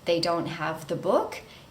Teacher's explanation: It's a statement, but I use rising intonation at the end to show that it's a question.